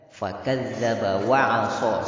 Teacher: Huruf di situ hanya satu saja yang tebal, huruf shad. Yang lainnya tipis, yang lainnya disenyumkan.